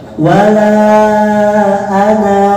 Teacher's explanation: Jadi kalau disambung wala ana'a, kalau disambung anaknya jadi pendek. Tapi kalau berhenti di anak, anaknya jadi panjang tuh. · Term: kaidah sifrun mustatil